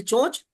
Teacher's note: चोंच, तो ओ की ध्वनि है, अतः अनुनासिक है